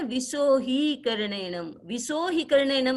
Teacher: यह है विसोहीकरणेनम, विसोहीकरणेनम नहीं है। यदि विसो ही बोलना जाएगा तो ही की मात्रा छोटी हो जाती है, जो अशुद्ध हो जाता है।